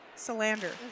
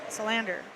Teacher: It looks like in the chat they're saying emphasis on the second syllable.